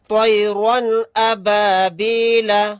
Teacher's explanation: رن کو جلد ادا کریں گے، ظاہر کر کے پڑھیں گے، اس میں غنہ اخفا نہیں کریں گے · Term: اظہار